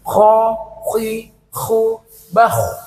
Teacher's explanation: Ko harus ada suara dengkur seperti orang mendengkur itu ya Ko bukan ko biasa tapi ko dan harus moncong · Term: huruf k